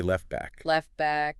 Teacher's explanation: The T sound in left gets completely lost before the B sound in back. You say left back.